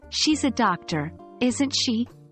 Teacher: if you think you know the answer and are just confirming, your voice goes down at the end. For example, "She's a doctor, isn't she?" with falling intonation.